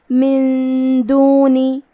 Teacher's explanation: کلمت من کے آخری میں نون ساکن ہے، پھر حرف الدال ہے۔ کلمت دونی، دال حروف الاخفاء میں سے ہے، تو ہم یہ حکم کو غنہ کے ساتھ ادا کریں گے